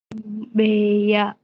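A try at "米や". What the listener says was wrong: Kome ya, bukan B. Dibacanya kome.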